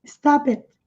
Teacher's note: e esse T bem sutil, quase imperceptível